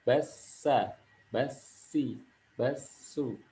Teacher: kalau huruf sin, dia pangkal lidah turun sehingga jadi huruf tipis.